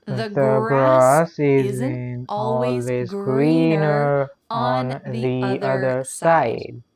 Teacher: don't forget that hard R sound in the word greener at the end, and also in the word other.